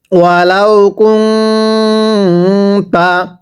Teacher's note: নুন সাকিনের পরে তা একবার গুন্নাহ করে পড়তে হবে।